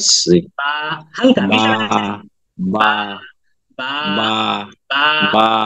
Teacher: যখন বা উচ্চারণ করবো তখন আমরা দুইটা ঠোঁট জাস্ট হালকা করে মিশবে